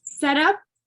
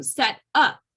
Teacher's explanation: when it's a noun the first part of the word is is stressed when it's a verb the second part of the word is stressed